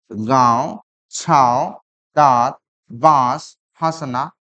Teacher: नाक और मुंह के द्वारा उच्चारण होता है चंद्र बिंदु का।